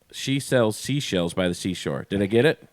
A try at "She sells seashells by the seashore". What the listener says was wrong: Yeah.